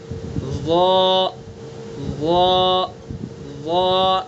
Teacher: ضا کا مخرج زبان کی نوک اور ثنا علیہ کا کنارہ